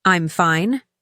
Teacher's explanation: Said with a rising intonation and a somewhat strained tone.